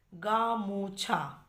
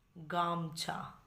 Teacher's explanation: ধরো একটা উদাহরণ বললাম, আসল শব্দটা হচ্ছে গামোছা, আমরা কি বলি গামছা। তাহলে দেখো মাঝখানে যে ওকার ছিল, ওকার স্বরধ্বনিটা এখানে নেই, লোপ পেয়ে গেছে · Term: মধ্য স্বরলোপ